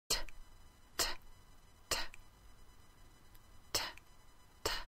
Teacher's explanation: try to do a D with no vocal cords, just a little teeny puff of air. · No voice is used. There was no bulging of the throat and no vibration. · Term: unvoiced consonant